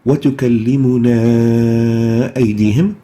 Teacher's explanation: optional. We can perform it, we can say وَتُكَلِّمُنَا أَيْدِيهِمْ, where we elongate the a for 4 to 5 units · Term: the separated med